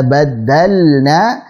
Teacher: lam sukun pada fi'il, pada kata kerja bertemu dengan huruf nun, kita baca lamnya dengan jelas. Jangan sampai jadi samar ke huruf nun. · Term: ilhar